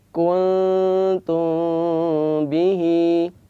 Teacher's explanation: Ikhfa syafawi artinya, ikhfa artinya samar, syafawi artinya adalah bibir, karena mim dan ba adalah keluar dari dua bibir. Maka definisi dari ikhfa syafawi adalah an-nutqu bil mim as-sakinah ala sifatin bainal izhar wal idgham.